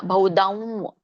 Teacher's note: ಬಹುದಂ ದಂ ಮೂಗಿಂದ ಹೇಳಬೇಕು